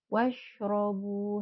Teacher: domah diikuti wau sukun merupakan Mad thii dua harakat hati-hati jangan terlalu panjang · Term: mad tabi'i